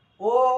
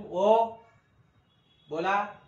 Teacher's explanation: उच्चार जो आहे तो लांबट होतो आणि दुप्पट वेळ लागतो, म्हणून याला दीर्घ स्वर म्हणायचं